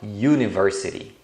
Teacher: o som do U é uma semivogal, é como se fosse o YU